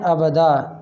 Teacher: دو زبر ہیں اوپر تنوین کے اور الف ساتھ میں کھڑا ہوا ہے، اس کی یہ نشانی ہے کہ ابدن وقفن ابدا، تو دال کو الف کے برابر کھینچ کے پڑھیں